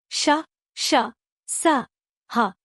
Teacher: ऊष्म व्यंजन जिन वर्णों का उच्चारण करते समय वायु मुख में टकराकर ऊष्मा अर्थात गर्मी उत्पन्न करती है तथा उच्चारण करने में हल्की सीटी की आवाज आती है, ऐसे वर्णों को ऊष्म व्यंजन कहा जाता है।